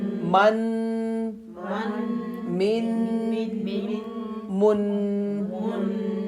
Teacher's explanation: تھوڑی دیر کے لیے آواز کو ناک کے اندر روکنا, ایک الف کے برابر تھوڑی دیر اتنا لمبا روکنا ہے آواز کو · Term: غنہ